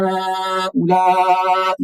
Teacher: अब हा को कम खींचना है, ला को ज्यादा खींचना है